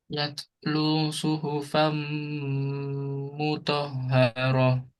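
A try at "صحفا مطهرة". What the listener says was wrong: Nah, jadi hak.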